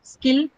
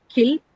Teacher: Skill, no aspiration. Kill, aspiration is available for ka.